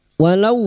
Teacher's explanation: Walau fathah bertemu wawu sukun kita lunakkan huruf lin